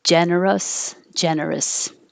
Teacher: you can make this an us or you can make it an is it doesn't matter generous generous it's not stress so no matter what if you